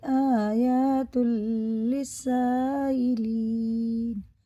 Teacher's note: مد متصل ہے، 5 الف کے برابر کھینچ کے پڑھیں گے، دونوں یہ حرف مدہ ہے، کھڑا زبر، دونوں مدہ کی طرح ہی پڑھے جاتے ہیں، دونوں کو برابر کھینچ کے پڑھنا۔